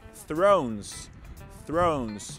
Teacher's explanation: the th sound here is voiceless